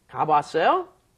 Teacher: when you put two ahs up next to each other, one, of course, disappears because you can't pronounce together without a consonant in between.